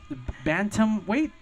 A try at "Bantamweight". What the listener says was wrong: You kind of said it like it was 3 words, but that's okay.